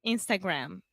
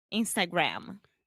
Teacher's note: o M no final que você tem que fechar a boca